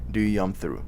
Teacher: the P letter, it's softened almost to the point that it completely disappears from the sound, from the intonation that you're doing, you know.